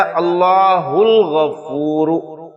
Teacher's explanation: ال کا حمزہ حمزۃ الوصل ہے، لہٰذا جب پیچھے سے ملا کر پڑھیں گے تو الف کی صورت میں لکھا رہ جائے گا، پڑھنے میں نہیں آئے گا